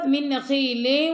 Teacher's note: من نخیل، وہاں پہ ادغام اور غنہ ہو رہا ہے، دونوں ہی ہو رہے ہیں، ٹھیک ہے۔